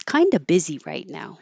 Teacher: So we don't have to say the V in of. It's weird that it looks like an F but sounds like a V.